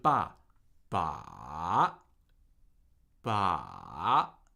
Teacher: Okay, we're going into the third tone now. So, the third tone, as you see, begins slightly below your normal speaking uh pitch. It decreases and then rises again. Right? So, it falls and rises. · It decreases and then rises again. Right? So, it falls and rises. And with the third tone, we actually end at a higher pitch than we began.